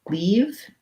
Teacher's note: the e as in leave is tense